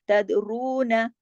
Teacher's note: दाल जो है वो जज्म के साथ आया, कलकला होगा